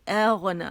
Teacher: میں اغنا, او غنا نہیں کہیں گے, اغنا, حمزہ باریک ہے غین جو ہے موٹا، اس میں رخاوہ، اس میں آواز چلے گی